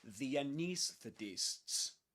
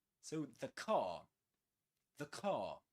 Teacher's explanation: if the next word begins with a consonant sound, like the car, you say the. You pronounce it with a schwa sound.